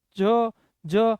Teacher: આ બધાને ઓછી હવાની જરૂર પડે તો એ બધા બન્યા આપણા માટે અલ્પપ્રાણ